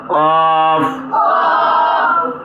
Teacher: কফ জিহ্বার গোড়া তালুর সাথে লাগাইয়া উচ্চারণ করতে হবে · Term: নুক্তা ওয়ালা কফ